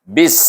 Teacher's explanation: Kenapa baca bis di sini? Bis kerana ba itu bertemu dengan alif lam syamsiah, huruf sin, huruf syamsiah, baca dengan idgham syamsi